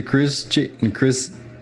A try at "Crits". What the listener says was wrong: Crits. Because the 7, like a T, Crits.